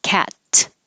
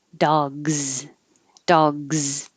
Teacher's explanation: s it sounds like an s cats because s is voiceless if it's dog there's vibration in the throat so when you have your voice on and you leave your voice on the s will change to a z